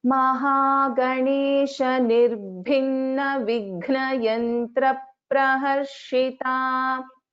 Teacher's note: just listen to this gha pronunciation. It is Mahaprana.